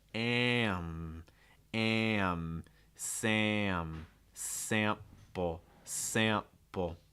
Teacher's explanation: If you look at our ah sound plus our nasal, I'll try to remember to include that in the notes as well. But when you have this ah sound that's followed by a nasal, it's going to break into two parts